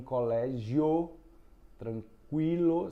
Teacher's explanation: Você nota que o som de I é fraco, acompanhando o O. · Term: ditongos pode ser crescente, ditongos